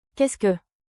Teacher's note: Finish with a soft rising tone.